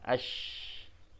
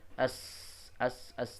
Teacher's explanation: tersebar angin dengan derasnya asyik jadi tidak sekedar us us us tapi asyya banyak anginnya di rongga mulutnya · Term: menyebarnya angin